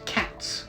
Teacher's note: take on the voicing of whatever sound comes before it so in cats since T is voiceless s also remains voiceless